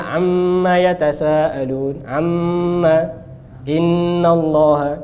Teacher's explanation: Nun dan mim bertasydid wajib dipanjangkan gunnahnya, baik itu ketika wasol atau waqaf.